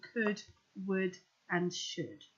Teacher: the L just contributes to the vowel sound in could, would, and should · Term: silent L